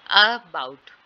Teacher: आगे है अबाउट, ठीक है, यहाँ पे अ वाला जो साउंड है उस पर स्ट्रेस है